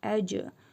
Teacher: Cim hərfinin üzərində cəzm gəlib qalqala edərək oxuyuruq.